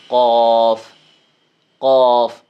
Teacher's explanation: یہ جو 2 نقطوں والا کاف ہے یہ زبان کی جڑ اور تالو کا جو نرم حصہ ہے یہاں سے ادا ہوتا ہے اور موٹا پڑا جاتا ہے، جیسے قوف قوف، ٹھیک ہے جی۔